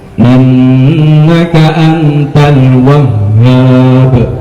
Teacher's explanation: Ha besar ini dia diucapkan dia di ujung tenggorokan. Kalau ujung berarti lebih ke dalam, ha itu.